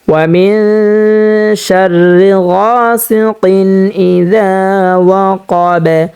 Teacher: এখানে ওয়াকফ হওয়ার কারণে বাটা সাকিন হয়ে যাবে, আর যদি বা সাকিন হয়ে যায় তো কফ বাকে ধরবে, এবং বাটা যদি সাকিন হয়ে যায় তাহলে এখানে বাটা কলকলা করে পড়তে হবে, কারণ বাটা হচ্ছে কলকলা হরফ।